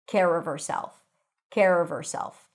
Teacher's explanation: the V of the word of, yes, it's a V, not an F, becomes the beginning of the word herself when you drop the H